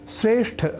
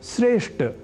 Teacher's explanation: श्रेष्ठ शब्द में ठ इस महाप्राण अक्षर का उच्चारण व लेखन लोग ट इस अल्पप्राण स्वरूप वाले अक्षर से परिवर्तित कर दिया करते हैं